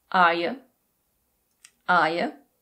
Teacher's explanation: You is often reduced to /jə/.